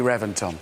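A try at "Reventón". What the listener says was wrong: Reventon. No, Reventon. No, I know it's spelt with a V, but it's pronounced with a B. They've told us it's B, Reventon.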